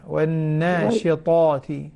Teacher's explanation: أنبهك على مسألة التفخيم والترقيق، لأنه بيفرق في يعني الطاء والتاء، الفرق بينهم الطاء مفخم، فخمها · والناشطات، طاء مفخمة غير التاء